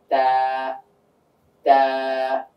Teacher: জিহ্বার আগাটা উপরের তালুর সঙ্গে চলে যাবে, তালুর সঙ্গে লেগে উচ্চারিত হবে